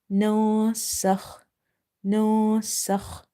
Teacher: here we have hidden the noon sakina sound because after noon sakin you see there is a letter seen. Seen is from the ikhfa letters.